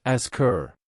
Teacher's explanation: native speakers often drop the H sound completely and link the vowel to the previous consonant. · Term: the dropped H